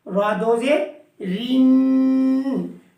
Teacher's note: پتلی آواز کریں گے کیونکہ زبر اور پیش کے ساتھ موٹا پڑا تھا، دو زبر کے ساتھ بھی را کو موٹا پڑا تھا، زیر کے ساتھ را کو پتلا پڑا تھا، اسی طرح دو زیر کے ساتھ بھی را کو پتلا کرنا ہے۔